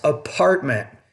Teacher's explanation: the P, you're not pronouncing with enough air.